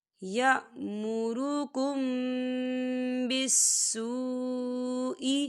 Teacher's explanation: انما انما یأمرکم بالسوء یأمرکم بالسوء، یہ دیکھیں یأمرکم، یا میم ساکن ہے، میم ساکن کے بعد با آ رہا ہے، تو یہاں پر اکفا شفوی ہو رہا ہے، ہم یہاں غنہ کریں گے، میم ساکن کی آواز کو ناک میں چھپائیں گے۔